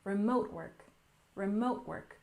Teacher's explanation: next we have remote work we stress the second syllable · We stress the second syllable, remote work, remote work.